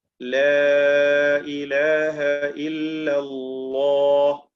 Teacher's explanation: ഹാഫത്തുൽ ലിസാൻ, അദ്നാ ഹാഫത്തുൽ ലിസാൻ ഇലാ മുൻതഹാഹ. നാവിന്റെ അരുവിന്റെ താഴ്ഭാഗം തറഫിലേക്ക് എത്തുന്ന ആ ഭാഗം വരെയുമുള്ള ആ സൈഡ്, അത് മേലെ മോണയോട് ചേർത്തുകൊണ്ടാണ് ലാം ഉച്ചരിക്കേണ്ടത്.